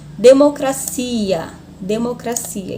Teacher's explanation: se for na língua portuguesa, a sílaba tônica é no si